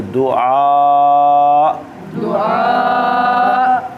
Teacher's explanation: آ کو لمبا کرنا ہے کیونکہ مد ہے، کیونکہ آگے حمزہ آ گیا نا، حروف مدہ کے بعد الف مدہ کے بعد حمزہ آئے تو مد آتی ہے، اور وقم میں وہ حمزہ ساکن بھی ہوگا، اس لیے حمزہ ساکن کو جھٹکا بھی دیں گے، آ کو لمبا کر کے جھٹکا بھی دیں گے